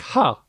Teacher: In Thai, it's a string of fives because the number sounds like ha with a falling tone.